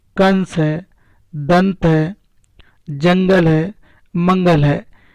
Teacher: अनुस्वार का उच्चारण करते समय हवा केवल नाक से निकलती है।